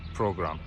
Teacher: the P and R they kind of merge together we do not pronounce the P then the r